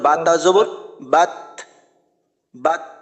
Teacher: তা যখন উচ্চারণ হয় জজম যুক্ত অবস্থায় তখন শেষে একটু বাতাস বের হয়